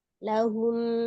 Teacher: Mimnya disempurnakan makhraj huruf mimnya walaupun dia ee ghunahnya sangat sedikit sekali karena hukum ee sifat dasar huruf mimnya saja ya.